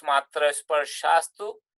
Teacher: And if you look at sandhi here, matra sparshatu, so that becomes matra sparshastu, because the visarga followed by takara becomes sakara